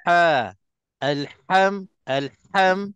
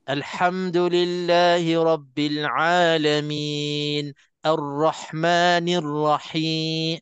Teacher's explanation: akan terasa macam pedih-pedih sikit ha itu yang saya rasalah ha setiap kali Nak sebut ha tu bila nak tekan nak bagi terkeluar betul-betul di tengah-tengah halkum itulah akan terasa di tengah-tengah alkum ni terasa macam ada tersekat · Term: ha pedas